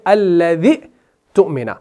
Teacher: हम यहाँ पर इस हमजा को ड्रॉप करते हैं जब अल्लज़ी के साथ मिलाते हैं